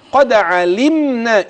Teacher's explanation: قد علمنا جاءت مره ثانيه الدال وتقلقل · الميم ساكنة ما فيش معاها فيها غنة